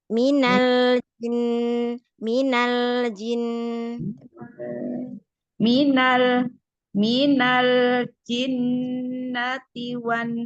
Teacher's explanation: Lamnya ee bainiah mengalir sedikit. Heeh. Jangan langsung putus biar tidak terputus dengan jimnya.